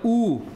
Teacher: represented by this U okay the symbol U ooh the um the tongue is also high but is towards the back the back part of the tongue